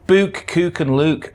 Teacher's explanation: Book, cook, and luke are typically pronounced with the goose vowel rather than that of foot.